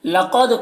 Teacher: قاف کو پر پڑھیں گے، حروف مستعلیہ میں سے ہے، دال میں قلقلہ ہوگا